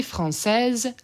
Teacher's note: i'll say that s as a z